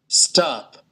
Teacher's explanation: Còn anh Mỹ này, nó là cái âm A dài. Nó là cái âm A dài các bạn nhé. Chứ không phải âm A ngắn. Chứ không phải âm O này. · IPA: /a:/